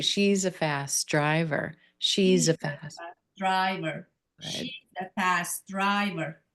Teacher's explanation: She's a fast driver. Driver is going to get that primary stress.